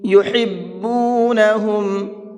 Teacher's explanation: یہاں پر یہ بڑا ہا ہے، بڑا ہا کو حلق سے نکال کر کے پڑھیں گے